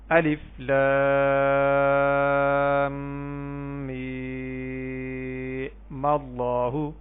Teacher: میم کے اوپر جو زبر ہے وہ ڈائریکٹ اللہ کے لام کے ساتھ ملا دیں گے